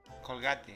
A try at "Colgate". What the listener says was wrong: No. Es Colgate. Colgate. No gay. Gate. Tienes que terminar con la T. Gate.